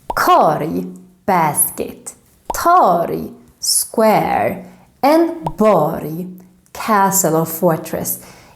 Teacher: In all these words, we need to say like j, not erg.